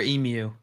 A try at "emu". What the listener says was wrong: It's emu. There's no Y in there. It's emu.